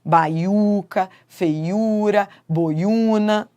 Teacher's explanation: nos três casos, o u é tônico, é forte. Ele é a vogal que manda na palavra